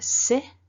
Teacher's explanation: no voicing otherwise it would be z